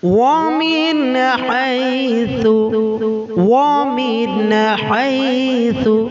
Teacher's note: নুন সাকিনের পরে হা বর্ণটি আছে। তো নুন সাকিনের পরে হা বর্ণটি যখন এসছে, হাটা হলো হরুফে হালকি অর্থাৎ ইজহারের অক্ষর। এই জন্য এটাকে আমরা গণনা করব না, গণনা ছাড়াই আমরা পড়ব।